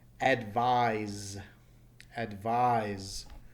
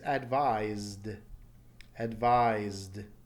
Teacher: Notice even though it's an S, that S is taking a Z sound. So if you listen to the Z sound and feel your throat, zzz, you should feel a vibration telling you that the past tense is advised.